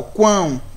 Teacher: teve essa puxada, teve essa necessidade do uso do nariz. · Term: tritongo nasal